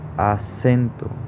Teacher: en acento, la sílaba tónica recae en la sílaba sen, porque es donde más fuerza o intensidad tiene